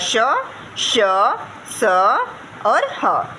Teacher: ऊष्म व्यंजन वे हैं जिन वर्णों के उच्चारण में वायु की रगड़ से ऊष्मा उत्पन्न होती है।